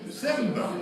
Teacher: And the R on the end, the post-vocalic R sound disappears